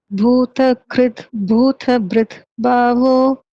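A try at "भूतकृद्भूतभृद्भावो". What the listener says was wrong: So all the bhas, I think I'm just looking at the sloka, all bhas are the second bha. It is not ba, it is bha.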